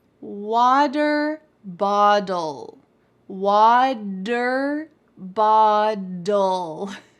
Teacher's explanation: The T in water actually sounds like a D in American English. · And the T's in bottle also sound like a D. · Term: T's change to D's